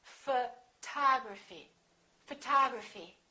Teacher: We stress the second syllable.